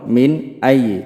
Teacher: নুন সাকিন ও তানবিন কে গুন্না ছাড়া স্পষ্ট করে পড়িতে হয় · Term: ইজহার